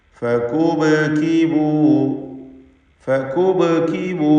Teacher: ഫകുബ്കിബൂ, ഈ പദം ശ്രദ്ധിക്കുക. ഫകുബ്കിബൂ, സാക്കിനത്ത ബാഇനെ ഖൽഖല സൂറ നൽകി ശബ്ദം ഹറക്കത്ത് പോലെ ചലിപ്പിച്ച് വ്യക്തമാക്കണം.